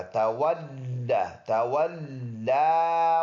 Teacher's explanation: لام پر اوپر شد ہے، لام مشدد جماؤ کے ساتھ پڑھنے والا